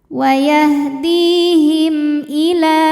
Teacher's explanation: Him hukumnya izhar syafawi karena mim sukun menghadapi huruf selain mim dan ba yaitu hamzah, maka mim dibaca jelas